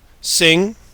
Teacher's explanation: And so many people, when they hear an NG word, such as sing, they imagine that there's a G in there, but there's really no G sound in a word like sing. We often write it as NG, but it's simply a nasal sound that it is to G what N is to D and M is to B.